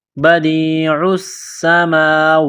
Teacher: بدیع السماوات، دال کو یا کے ساتھ پلس کرنا ہے، عین کو سین کے ساتھ ملانا ہے، پلس کرنا ہے، سین میں سیٹی کی آواز پیدا کرنی ہے